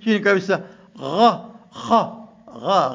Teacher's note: Gha na kha, hizi zinatoka wapi? Chini katika adna al-halq, alafu wasat al-halq, katikati yako unazipata herufi kama ain na he, na mwisho al-halq, mwisho wako unakuja alif, hamza, yani na ha.